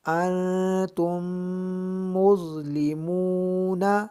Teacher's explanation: میم ساکن کے بعد میم ہے تو یہاں پر ادغام شفوی ہوگا اور غنہ بھی ہوگا یعنی ناک میں آواز لے جا کر اس میں غنہ بھی کیا جائے گا